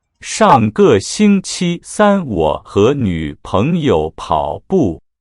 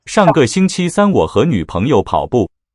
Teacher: Very robotic recitation there with equally spaced syllables. Not a good model to emulate for the sentence, but very clear on each individual syllable.